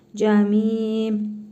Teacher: Cim hərfidir cə. Mim hərfində hərfi məd var. Bir əlif miqdarı uzadırıq.